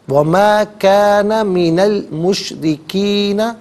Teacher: مشرکین میں را کے نیچے زیر ہے، را کو باریک کر کے پڑھیں گے